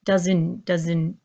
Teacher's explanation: When I pronounce my word doesn't, you don't hear the strong T at the end. You hear doesn't, doesn't.